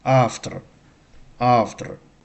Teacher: So, the v sound is softened. It's like f